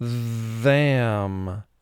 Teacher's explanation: it's louder because we use our vocal cords to uh partly produce this sound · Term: second sound for th